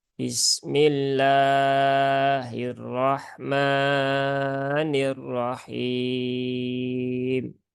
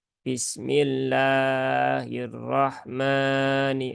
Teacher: yang kedelapan ini juga Biasanya kita temukan para pembelajar pemula yaitu memanjangkan mad asli pada lafaz Allah